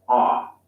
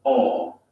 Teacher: American O sound is an unrounded vowel, ah, while the British O sound is rounded, aw.